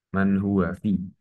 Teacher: fi adalah matobi'i dibacanya panjang dua harokat